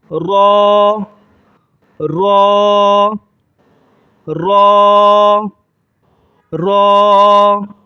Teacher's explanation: ایک الف کے بقدر کھینچیں گے اور دوسرے نمبر پر اس کو موٹا کریں گے